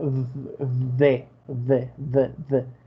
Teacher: Es como una D de dedo, solamente que echando un poquito de aire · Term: sonido TH